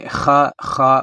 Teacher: خا ہمارے جو گلا ہے اس میں رگڑ پیدا ہوگی